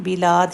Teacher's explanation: دال آ رہا ہے سب کے لاسٹ پہ تو اسٹرانگ کلکلا ہوگا